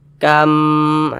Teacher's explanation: kita dengungkan bacanya kita gunahkan jadi suaranya kita tahan kita panjangkan sejenak Kam di bagian kamnya kita tahan kita panjangkan kam di sini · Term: idgham mimi